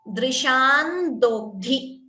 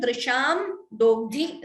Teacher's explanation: You could optionally combine the anuswara, combine the sandhi and chant it as drishan dogdhi. Okay, drishan dogdhi or even drisham dogdhi is also correct.